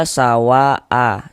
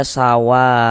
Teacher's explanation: Mad thabi'i bertemu dengan huruf hamzah dalam satu kata, maka dia berubah menjadi mad wajib muttasil. Panjangnya mad wajib muttasil itu dibaca dengan panjang 4 sampai dengan 5 harakat.